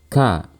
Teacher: suara tidak mengalir saat kita melafalkan huruf Kaf karena tertutupnya makhraj dengan sempurna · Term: syiddah